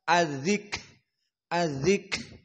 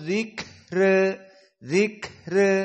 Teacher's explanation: Maka di saat disukunkan adzik, adzik, ada kaf yang nafasnya keluar, adzik, itulah hams.